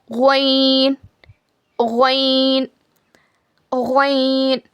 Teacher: हलक के ऊपर वाले सूखे हिस्से से ग्वन अदा होता है। It is pronounced from the top dry portion of your throat.